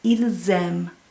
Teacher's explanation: If I want to say they like, I could say ils aiment. And you're going to hear that S that sounds like a Z in there